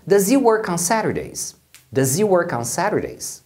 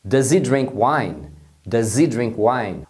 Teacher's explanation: o he acaba tendo o H omitido, sobrando só o som do I. E aí eles juntam a pronúncia do does, o S final tem um som de Z, é does. Então, quando eles emendam com o he, que perdeu o H, fica does he work on Saturdays? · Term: junção